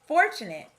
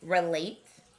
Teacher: i noticed the schwa sound in fortunate and the eight sound in relate